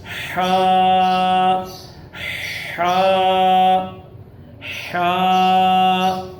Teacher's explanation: حلق کے درمیان اور اوپر والے حصے سے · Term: حروف حلقی